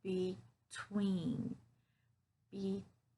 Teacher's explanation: so you hear that stress on the twin part